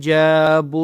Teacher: جیم کے اوپر زبر ہے، اس کے بعد الف ہے تو کھینچنا ہے